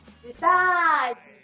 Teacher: o dá é a sílaba tônica e tá na penúltima sílaba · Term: penúltima sílaba tônica